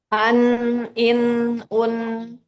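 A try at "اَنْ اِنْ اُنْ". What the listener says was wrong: Oke, itu dimaksud mengalir gitu ya. Jadi dia nggak cepet-cepet gitu. Ada durasinya.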